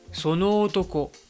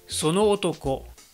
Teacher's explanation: Par exemple, si tu as un mot qui termine par O et le mot suivant qui commence par ce même son O, il ne faudrait pas que tu prolonges le O final. Il ne faut pas dire sono otoko, mais sono otoko.